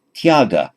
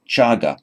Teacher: And for the Pali students, it is the word chaga, the ty followed by a vowel often becomes a ch in Pali.